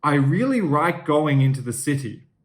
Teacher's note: the l and the r sounds get swapped around with each other